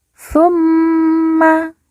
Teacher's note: Mim yang bertasydid langsung kita tekan, kita tahan 2 harokat dan didengungkan.